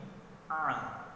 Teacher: Bukan dari hidung, tapi huruf ain keluarnya dari tengah-tengah rengkungan kita ataupun wasatal halaq